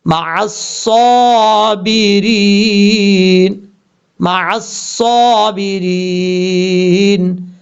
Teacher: صاد حروف مستعلیہ میں سے پر پڑھا جائے گا · واللہ واللہ مع میم کے بعد عین ہے، عین کو کلیئر کر کے پڑھنا ہے، حمزہ کی آواز نہیں آنی چاہیے